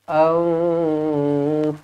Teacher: Mim yang bertanda mati izharu syafawi dibaca dengan jelas dan terang. Matikan betul-betul.